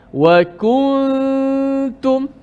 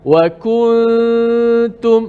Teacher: Ku, nun kita kekalkan pada gunnah saja di hidung. Adapun makhrajnya selepas kita sebut kaf terus pergi pindah dekat ta. Tunggu dekat makhraj ta. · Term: ikhfa